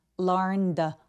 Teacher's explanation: n 스펠링이 유성음이기 때문에 성대가 울려서 ed는 통째로 드로 발음합니다.